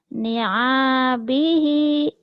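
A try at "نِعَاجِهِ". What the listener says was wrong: Ni abihi itu jim bukan ba ya. Ni ajihi.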